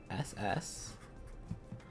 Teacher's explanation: like a harsh s or like a s but your throat is constricted a bit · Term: harsher s